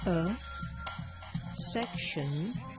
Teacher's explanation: For those of you who know about a syllabic consonant, here we can use the syllabic consonant for N. If you don't know about it, don't worry, you can use schwa plus N, only a section of another preposition which can be used in its weak form.